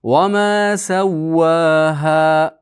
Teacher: Ha 2 harakat miqdori cho'ziladi.